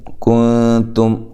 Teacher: کاف کو باریک، یہاں نون ساکن کا اخفا ہے،